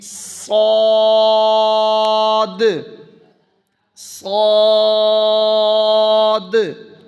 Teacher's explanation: اس کو پر بھی پڑھیں اور سیٹی بھی